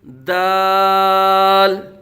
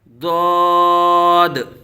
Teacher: دال کا مخرج بھی علیحدہ ہے زبان کے نوک اور اوپر کے دانتوں کی جڑ سے، جبکہ ضاد جو ہے یہ زبان کی کروٹ اور اوپر کی داڑھوں کی جڑ سے ادا ہوتا ہے